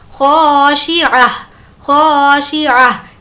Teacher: یہاں پر خا ہے، تنوین کے بعد خا ہے، اسی لیے یہاں پر تنوین کی آواز کو ظاہر کر کے پڑھیں گے، اس کو اظہار کہتے ہیں۔ خاشعہ خاشعہ، یہاں پر بھی گولتا پر وقف کرنا ہے تو وہ ہائے ساکنہ بن جائے گی۔